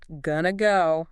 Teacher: going to links straight into go. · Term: linking